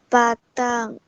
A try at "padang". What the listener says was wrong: Bukan ba, bukan ba. Pa. P-A, pa. Padang.